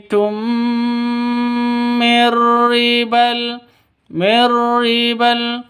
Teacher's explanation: itu [Tertawa] witum mirriibal miribal mim mati bertemu dengan mim nah mim mati bertemu dengan mim cara bacanya masuk ke mim yang kedua disertai dengung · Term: idgham mimi